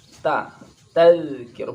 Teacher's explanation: Ta ini dibaca tipis dan bunyinya ta, bukan te.